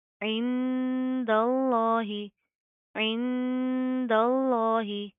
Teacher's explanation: لفظ اللہ کو ہم موٹا پڑھیں گے، کیوں؟ کیونکہ اس کے ماقبل دال کے اوپر زبر ہے.